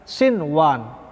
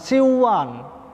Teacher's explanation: tidak dibaca dengan dengung, melainkan dibaca idhar